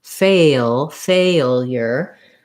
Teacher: In the word failure, we have first syllable stress, and we have the A diphthong, A, fe. So it may help you to start by saying something like fe to have that length for the A diphthong.